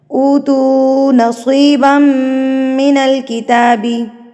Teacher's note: आपने उ को भी लंबा करना है तू को भी लंबा करना है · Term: मद मुनफसिल